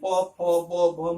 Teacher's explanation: त, थ, द, जिसका उच्चारण स्थान दंत है। और प वर्ग जैसे प, फ, ब, भ, म, ये सभी के सभी ओष्ठ है, इनके उच्चारण स्थान ओष्ठ होते